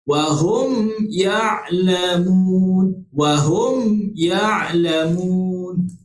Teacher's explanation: baca dengan rapatkan bibir mulut kita ketika kita menyebut huruf mim mati dan tanpa dengung ketika kita nak sebut daripada huruf mim kepada huruf ya. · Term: izhar syafawi